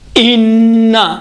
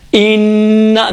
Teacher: جب آپ غنّہ کرتے ہیں، دیکھیں ان، یہ آپ کی زبان کی جو نوک ہے، وہ نوک اوپر جو تالو ہے، تالو سے لگتی ہے کاملاً